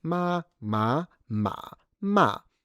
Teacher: Note that I did not do a full third tone because that's mostly the academic way to do it in everyday